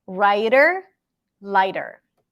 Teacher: we also have the flap T that sounds a little bit like an r a little bit like a d